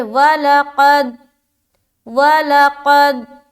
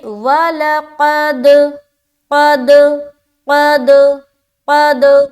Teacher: مثال کے طور پر اگر کوئی شخص پڑھتا ہے وَلَقَدْ، وَلَقَدْ، قلقلہ نہیں ہوا، قد، کیونکہ دال کی مخرج پر جا کر ہماری آواز اسٹاپ ہو جا رہی ہے، جو کہ غلط ہے ۔ قلقلہ میں آواز اسٹاپ نہیں ہوتی بلکہ واپس لوٹتی ہے، · ہماری آواز اسٹاپ ہو جا رہی ہے، جو کہ غلط ہے۔ قلقلہ میں آواز اسٹاپ نہیں ہوتی بلکہ واپس لوٹتی ہے، ٹکرا کر واپس آتی ہے ، جیسے کہ کسی گیند کو ہم وال پر ماریں گے